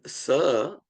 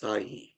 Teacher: One is sa, which is a dental sound, like in the word sai.